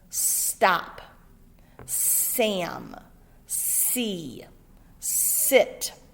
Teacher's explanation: you can feel that air coming out so it is unvoiced we feel it coming out of our mouth not in our neck it is unvoiced